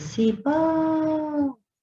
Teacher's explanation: Então, sempre demorei na última sílaba e nós sabemos muito bem que se a última sílaba é a mais forte, a palavra é oxítona.